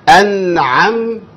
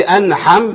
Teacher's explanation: هو يقصد ان انا اخلي الحاء يبان فيها الهمس اه ارح والعين اخلي في العين ما فيش هوا بيطلع اقفل النفس عليها شويه